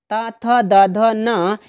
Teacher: इनका जब हम उच्चारण करते हैं तो जीभ जो होती है दांतों को स्पर्श करती है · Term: दंत वर्ण